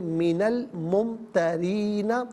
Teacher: فلا تکونن، فلا تکونن من الممترین، नाज़रीन यहाँ पर आप देखें मिन में नून साकिन था, जैसे अलमुमतरीन के लाम साकिन के साथ मिलाना है तो नून पर ज़बर आया, ज़बर को अलमुमतरीन के लाम साकिन के साथ मिलाया, दरमियान से अलिफ यानी हमज़ा को हज़फ किया तो हम इसे पढ़ेंगे मिनल मुमतरीना।